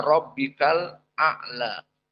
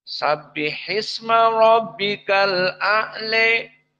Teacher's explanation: maka dibaca aljumhur dengan Fathah di sini alqisai membaca dengan Al imalah